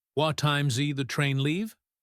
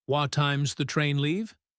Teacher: the word does gets reduced heavily. Sometimes it just sounds like a z sound or an s sound.